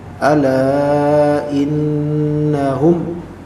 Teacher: innahum digunnahkan. Ada gunnah nun di sini.